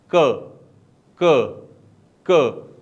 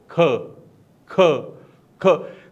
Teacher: मैंने कहीं भी अपनी टंग को मूव ही नहीं किया मैंने कहां से आवाज निकाली मैंने अपने गले से आवाज निकाली